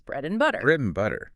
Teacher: We almost never say bread and butter with a full clear and. It becomes bread and butter.